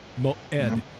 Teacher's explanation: the sound it makes is just a glottal stop MO Ed it does not have a corresponding sound or letter